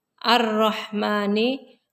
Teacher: Ar-Rahmani, hukumnya idgham samsiyah karena ada lam ta'rif diikuti ro. Cara bacanya huruf lam dimasukkan ke huruf ro.